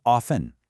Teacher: Often is usually pronounced with a silent T